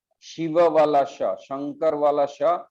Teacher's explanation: शिव वाला श, शंकर वाला श ये तालव्य श है।